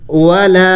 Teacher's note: الف مدہ کو ایک الف کے مقدار لمبا کرنا ہوتا ہے